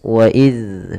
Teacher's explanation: Maka yang pertama adalah kita mengetahui tempat keluar daripada huruf zal itu. Zal tempat keluarnya adalah dari ujung lidah kita menempel dengan gigi seri atas. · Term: huruf dalal